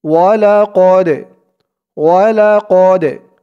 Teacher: ওয়ালাকদ, ওয়াও জবর ওয়া, লাম জবর লা, ওয়ালা, কফ দাল জবর কদে, ওয়ালাকদে। এই দালটা হচ্ছে কলকলার হরফ, ধাক্কা দিয়ে পড়তে হবে।